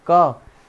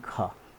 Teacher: एक अल्प्राण ध्वनि के बाद महाप्राण ध्वनि है